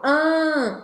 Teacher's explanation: abre como se fosse um a e tenta falar um som anasalado como se fosse um ã mas de boca aberta